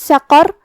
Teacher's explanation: قاف کی ادائیگی زبان کے جڑ اور تالو کے نرم حصے سے ہے. قاف حروف التفخیم میں سے بھی ہے تو ہم یہ حرف کو بھاری آواز میں پڑھیں گے.